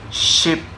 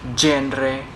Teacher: sh is a voiceless postalveolar fricative, while j is voice. Ship and genre shows the initial contrast.